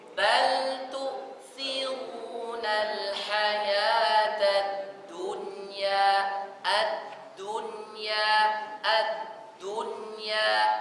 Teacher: Di du bibir posisi monyong. Tapi pas di nun kembalikan.